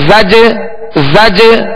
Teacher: یہ جو آواز لوٹ رہی نا زج زج، یہ جنبش ہو رہی ہے آواز میں. زج جیم کی ادائیگی میں مخرج میں جنبش ہو رہی ہے، جو آواز لوٹتی ہوئی آ رہی ہے اسے قلقلہ کہتے ہیں